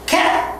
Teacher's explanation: cat, t나 t 이 t는 전부 무성음입니다. cat 하고 소리가 콱 멈추기 때문에 무성음